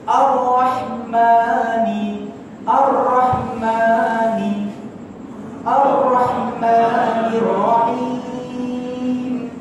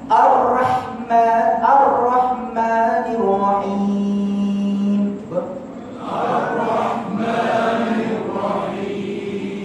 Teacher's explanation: ra dia jadi ra yang tafkhim, dia jadi ra yang tebal. Ar-rah, bila ra yang tebal jumpa pula dengan ha dekat pertengahan halqum.